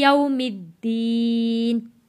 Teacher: यौमिद, मीम जुड़ेगा दाल के साथ। यौमिद्दीन, वक्फ में नून का ज़ेर ख़त्म हो जाएगा, दीन पढ़ा जाएगा